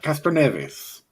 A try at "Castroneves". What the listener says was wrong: Castroneves. You didn't roll your R's.